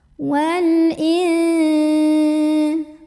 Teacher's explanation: alif lam qamariyah karena alif lamnya bertemu huruf qamariyah yaitu hamzah. Maka lam ini kita bunyikan dengan jelas. Wal in. Ada ikhfa ausat karena ada nun sukun bertemu dengan jim.